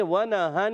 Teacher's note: اچھا یہاں نون پر دیکھیں تشدید ہے، اس نون پر تشدید نہیں ہے، اس نون پر تشدید نہیں ہے، مگر اس نون پر تشدید ہے. اب دیکھیں اس کو ہم نے جلدی سے پڑھنا ہے، مگر اس میں تھوڑا سا ایک الف کا غنہ کرنا ہے